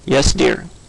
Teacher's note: the level tone is associated with responses to routine or uninteresting questions